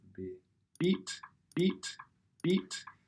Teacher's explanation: that this is an effect on all of the formants by a labial closure which is the closure of the lips which is what you're getting with a B